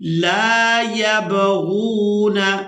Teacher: لام کو الف مدہ کی وجہ سے کھینچ کر ادا کریں گے